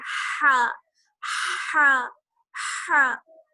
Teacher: جو بڑی والی ہماری ہا ہوتی ہے اور جیم کی طرح ہوتی ہے، تو وہ جو ہوتی ہے حلق کے بیچ والے حصے سے ادا ہوتی ہے ہا ہا ہا. اور جو ہماری چھوٹی ہا ہے یا گول چشمی ہا ہے وہ ہوتی ہے حلق کے سب سے نیچے والے حصے سے ادا.